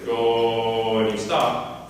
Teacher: So if you say the word go, you're saying O. And if you say the word go and you make yourself not go to oo, you say go and you stop, that's basically a closed O. This one also exists in more extreme versions and less extreme versions.